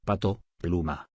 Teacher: P. Representa el sonido oclusivo bilabial.